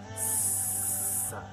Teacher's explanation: Contohnya huruf sin ya. Jadi kita mengucapkan huruf sin itu harus kayak ban kempes. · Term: hamas